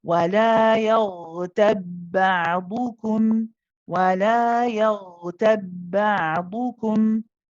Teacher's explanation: go to the makhraj of the ba only once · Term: idgham